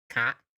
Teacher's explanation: So it'd become a high tone. And the thing about the high tone is you have to pinch your voice when you're at the end. Otherwise, it sounds like a rising tone.